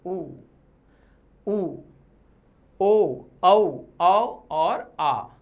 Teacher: पश्च भाग पीछे से ऊ, ओ, औ, आ और आ, ये अंग्रेजी भाषा से लिया गया है, ऑफिस, कॉलेज, तो ये भी कहाँ से हो रहा है, पश्च भाग से। जीभ का जो अंतिम भाग है वहां से उच्चारित हो रहा है